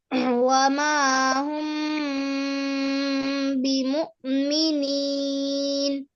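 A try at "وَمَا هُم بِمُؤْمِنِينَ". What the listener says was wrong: আচ্ছা, ওমা হুম, আমরা হচ্ছে ওয়াজিব গুন্নার মতো উচ্চারণ করলাম। এটা আসলে ইকফা, তো এই জন্য গোপন হবে, অর্থাৎ অনিশ্বার চলে আসবে।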